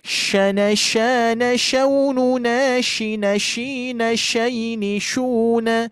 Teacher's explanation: Kalau yang ini tafashi, bukan ujung lidah menempel ke gigi seri bawah, tapi tengah lidah